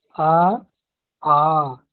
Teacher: मैं आ को पूरी तरह से उच्चारण किया, अ ऐसा नहीं कहा। यदि हम ऐसा करते हैं तब ये गलत उच्चारण हो जाता है।